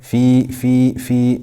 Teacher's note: kasra followed by a ya, so this is mad tabi'i for 2 harakat.